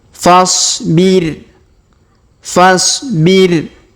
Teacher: Huruf fa langsung ke huruf so sukun ya. Alifnya tidak dibaca karena ini namanya alif hamzah wasol ya, hamzah penyambung. Fasbir.